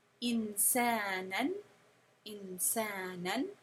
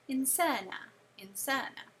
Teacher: you will only hear the sound of the Tanween when you are continuing recitation. When you pause the recitation on that word, it disappears.